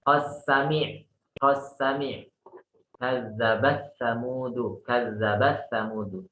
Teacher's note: Jadi kalau riwayatnya Abu Amr itu dibaca dengan idgham.